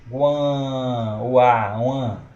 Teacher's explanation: Então vai ser um ditongo nasal, certo? Um ditongo nasal crescente, porque ele vai subir. Guan, o A, uan, vai subindo, certo?